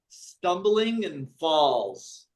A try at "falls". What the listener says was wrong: Try to remember it A-L, it's not O, it's ah.